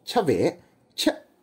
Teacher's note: 质》一文中就举过这么个例子，天这个字单独发音时读▁T，调值较低，但如果放到连读词汇比如天门山就会变成这样▁Timense，▁调值是不是就上去了。按照这个逻辑，一三俩字单独发音▁Yes，▁调值都比较低，如果连着读▁AGC▁里，调值是不是就升上去了呢？另一个共性是 因为保留了古汉语的入声，所以延续了喉塞音 。吴语区方言的一大特点是许多词语都会在末尾习惯性收回声音，比如吃饭在上海话里读作恰尾恰，最后的尾音▁H▁就被吞了，其他数字如耶、罗、恰、巴、萨也都是入声。而当喉塞音加上连续变调，就会使得有些吴语方言听起来像是唇齿喉舌在小范围内高频震动，颇有意趣。但真要说入声，可能最典型的例证还得属另一种方言区，粤语。和吴语入声韵尾主要是▁H▁不同